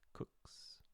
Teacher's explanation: It's voiceless. So we'd say it with an S sound.